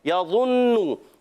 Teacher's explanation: ضا موٹے حروف میں سے، ایکسٹرا موٹے حروف میں سے بھی ہے، حروف مستعلیہ میں سے بھی ہے